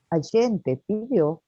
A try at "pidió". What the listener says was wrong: Só lembrar que aqui o U tem um som diferente. Então, a gente vai falar pediu, certo?